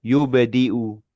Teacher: yubdi'u juga huruf ba sukun itu kolkolah ya, kolkolah sugro ya.